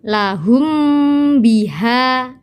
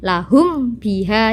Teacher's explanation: jadi harus dibaca dengung dan agak lama tidak boleh dibaca lahum biha tidak boleh jadi harus ada dengungnya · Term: Ikhfa Syafawi